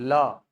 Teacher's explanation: जिस वर्ण का उच्चारण करते समय वायु जिह्वा के पार्श्व भाग का अनुसरण करे, साइड का अनुसरण करे, आजू बाजू से बाहर निकले, उसको नाम दिया जाता है पार्श्विक व्यंजन।